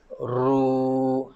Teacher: Dia ada getaran sikit dekat hujung lidah tu sebenarnya. Ada takrir.